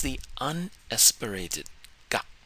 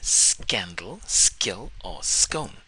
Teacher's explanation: This is the unaspirated ga. That means it's not the same as the k sound in candle or kill or cone. It's the g sound in scandal, skill or scone.